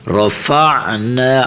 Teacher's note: بعض بچے پڑھتے ہیں رفعنا، تو یہ غلط پڑھا جائے گا، حمزہ نہیں ہے، جھٹکا نہیں لگانا. رفعنا، عین کی اپنی آواز نکالنی ہے